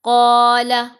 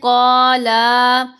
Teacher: اب قاف کو لمبا کر لیا 2 حرکات کی مقدار، لیکن لام کو لمبا نہیں کرنا۔ بہت سے بہن بھائی کرتے ہیں قالا، تو پھر جتنی قاف کو لمبا کیا اتنا لام کو بھی لمبا کر دیا، تو لام کے ساتھ تو الف کوئی نہیں، یہ پھر غلطی ہو جاتی ہے۔ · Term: لام کو بالکل چھوٹا